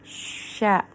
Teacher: tafashi, menyebar, itu membunyikan tersebar di mulut